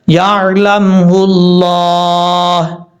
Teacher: 2 چیزیں ہیں، لفظ اللہ سے پہلے زبر یا پیش ہو تو پر پڑھا جاتا ہے۔ اب یہاں پر لفظ اللہ سے پہلے پیش ہے، اس کو اس لیے یہاں پر موٹا کریں گے، پر پڑھیں گے